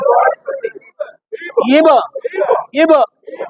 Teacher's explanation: বায়ের উপর সাকিন থাকলে কলকলা করে